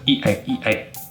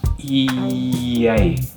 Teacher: Notice how it's very jumpy, E-A. But what we do as native speakers is we add this y sound before the A